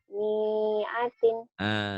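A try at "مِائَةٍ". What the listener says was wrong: Saya tanya kenapa panjang. Kau panjangin, Neng.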